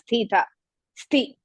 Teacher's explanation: only thing is you have to stress the ಮಹಾಪ್ರಾಣ